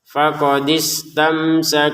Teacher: mim sukun bertemu sin dibaca dengan jelas